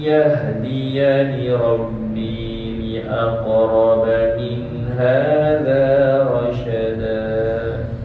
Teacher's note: Kita jumpa satu qalqalah qaf li aqraba, berikan dia masa keluar dulu. Ada orang dah masuk makhraj tapi dia tak terlepas.